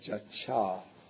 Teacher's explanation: the long a doesn't remain because then the syllable becomes too heavy so the long a gets shortened into the short a